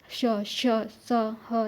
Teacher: इन व्यंजनों के उच्चारण में हवा किसी स्थान पर रगड़ खाकर बाहर निकलती हुई ऊष्मा उत्पन्न करती है। जब आप बोलते हैं तो रगड़ खाकर बाहर निकलेगी आपकी आवाज और साथ में ऊष्मा उत्पन्न होगी। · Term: उष्म व्यंजन